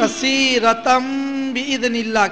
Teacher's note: اقلاب. دو زبر کی تنوین کے بعد با آیا اس لیے دو زبر کی تنوین کو من سے بدل کر گنہ اور اخفا کے ساتھ پڑھیں گے